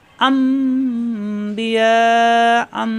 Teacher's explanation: নুন সাকিনের পরে বা আসার কারণে এই নুন সাকিনকে এখন মিম ধরে পড়তে হবে। এখানে কিন্তু মিম দেওয়া নেই, এখানে ধরে নিতে হবে মনে মনে, এখানে মিম ধরতে হবে। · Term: ইকলাফ